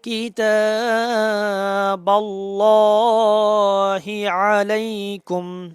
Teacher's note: হচ্ছে খারা জবর আসছে এক আলিফ পরিমাণ টেনে পড়তে হবে কেমন তবে আল্লাহ শব্দের লামটা মোটা হবে